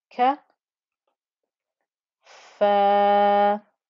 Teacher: because the fa has a fatha and it's followed by an alif, so that's where the 2 count stretch is, and the ya that's sat underneath is literally just like a little cushion that doesn't take part in the pronunciation at all.